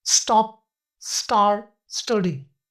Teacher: दूसरा साउंड जो होता है वो होता है स्टॉप टी यानी अनएक्स्परेटेड टी साउंड। यह साउंड तब बनता है जब टी लेटर एस के बाद हो।